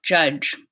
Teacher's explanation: Affricate j followed by affricate j, judge.